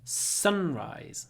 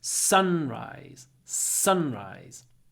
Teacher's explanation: Stress on the first word. Sunrise. So we get a long s.